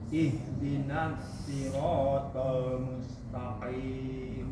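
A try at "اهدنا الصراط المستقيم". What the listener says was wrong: Kurang desisnya. Ihdinas siratal mustaqim. Ihdinas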